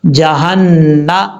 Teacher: جب یہاں پہ رکیں گے اسٹاپ کریں گے تو میم کو ساکن کر دیں گے